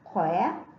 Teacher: khi phát âm vần oe chúng ta phải tròn môi